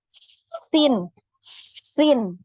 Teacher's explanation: Ketika pengucapan huruf sin ini ada nafas yang ngalir keluar ya. Sin, sin. Nah ini terasa sekali nafasnya ya.